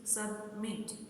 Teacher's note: stress falls on the last syllable मीट